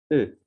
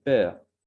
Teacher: La voyelle orale mi-ouverte arrondie antérieure E. Comme dans peur.